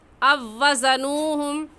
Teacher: یہاں پر او وزنوہم پڑھنا غلط ہے اور صحیح ہے او وزنوہم۔ پہلی واو کو چھوڑ دیں گے اور دوسری واو کو پڑھیں گے